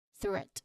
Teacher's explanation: when we try to touch our neck and say or pronounce the sound, there's no vibration at all. So it's just a puff of air. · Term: voiceless th sound